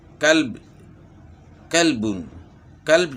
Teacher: قاف کو ہم نے موٹا نہیں کیا، چھوٹا کاف پڑا